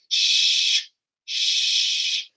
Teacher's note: Your teeth are going to be together. It's going to be similar to a ch, but it's going to be just breath pushed through your teeth, and it's not going to be dropped at the end. So your teeth will be together, and your lips will be apart, and it'll be a sh, sh.